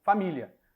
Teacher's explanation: esse A final, ele soa, ele é emitido de forma breve, curta